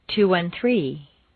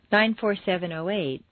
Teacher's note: with the stress falling on the last member of the group